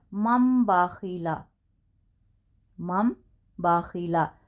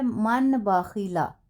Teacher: نون کو میم سے بدل کر غنہ اور اخفا کے ساتھ پڑھیں گے، یہ اقلاب کا قاعدہ ہے۔